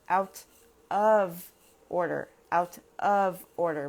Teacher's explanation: in fast speech of is very rarely pronounced of it usually sounds just like uh